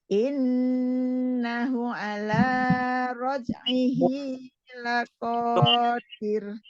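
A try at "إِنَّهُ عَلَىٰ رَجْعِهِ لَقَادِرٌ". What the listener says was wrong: Hu-nya 2 harokat. Innahu 2 harokat.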